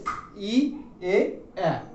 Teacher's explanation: আমাদের ঠোঁট দুই দিকে প্রসারিত হয়। তোমরা উচ্চারণ করলে বুঝতে পারবে ই এ এ।